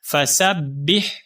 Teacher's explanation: سین کو ہم با مشدد کے ساتھ ملائیں گے، با مشدد کو آگے ہم ہا کے ساتھ ملائیں گے، ہا باریک ہے، حلق سے آواز آئے گی